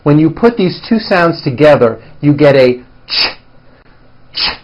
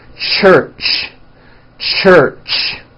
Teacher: let's start with the CH it's a common sound in English it's a combination of the T sound t and the sh sound sh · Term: CH sound